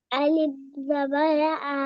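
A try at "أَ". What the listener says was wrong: আলিফ হবে না, হামজা হবে। আলিফ না হামজা।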